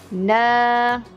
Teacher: Na dua harakat untuk na kerana mad asli